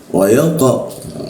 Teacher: Pantulannya ee mengarah ke huruf O tapi lidahnya tetap A ya.